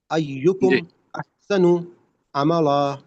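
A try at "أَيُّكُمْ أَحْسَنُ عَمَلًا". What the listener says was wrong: ایکم احسن عملا نہیں عین پراپر ادا نہیں ہو رہی نا. حلق سے تھوڑا سا توڑ مڑوڑ کے آئے گا, حلق کو ٹائٹ کرنے سے آئے گی.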